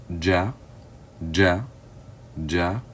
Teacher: gene letter or the J letter is produced the gene letter is produced by the middle of the tongue touching the upper palate so the middle of the tongue or front to middle of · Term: JEEM letter